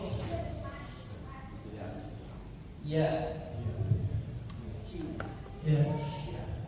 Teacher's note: Tengah lidahnya bertemu dengan langit-langit mulut bagian atas